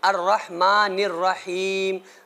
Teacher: الرحمٰ میں جو ہا ہے یہ بیچ حلق سے نکلنی ہے، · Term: بڑی ہا